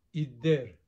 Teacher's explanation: a feature that's unusual in Armenian dialects, which is geminate or long consonants